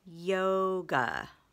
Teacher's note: yo is a long o it's just a normal open syllable but GA a it's an exception because it's an open syllable